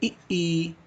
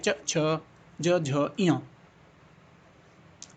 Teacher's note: वे वर्ण जो तालु के स्पर्श से बोले जाते हैं उन्हें तालव्य कहते हैं। जैसे इ ई।